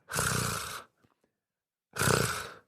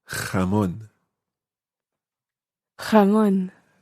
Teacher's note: The sound itself should be a sort of guttural roll in the back of your throat.